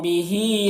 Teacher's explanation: हा में खड़ा ज़र है, ये या मद्दा की तरह होता है, इसे एक अलिफ को बराबर खींचेंगे।